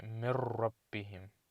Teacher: You don't pronounce the noon, you say min rabbihim. So you basically connect the meme and the ra, and you discount that noon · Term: silent letter